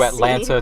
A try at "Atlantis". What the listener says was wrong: Atlantis. You said Atlanta again.